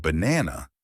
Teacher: in the word banana, the stress is on the second part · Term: word stress